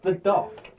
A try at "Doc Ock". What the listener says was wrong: Yeah, but you said it. It sounded like the cock. But yes, Doc Ock.